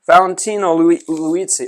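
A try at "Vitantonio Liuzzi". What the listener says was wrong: It doesn't say Valentino. That doesn't say Valentino. Valentino's with an A. That's an I.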